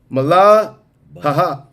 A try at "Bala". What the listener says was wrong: Bala. You don't pronounce the ha-ha.